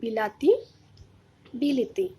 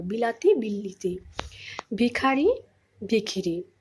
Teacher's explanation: দুটো স্বরধ্বনির প্রভাবে মাঝখানের যে স্বরধ্বনিটা ছিল আকার, সেটা কি হলো, একই স্বরধ্বনিতে পরিণত হলো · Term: মধ্যগত স্বরসঙ্গতি